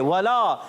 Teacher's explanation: वाव की अदायगी होती है होठों की गोलाई से।